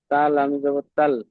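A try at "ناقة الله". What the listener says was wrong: কটা টান নেই কিন্তু, কটা কিন্তু টান নেই, নাটা টান আছে, কটা টান নেই। নাকাতাল্লাহি।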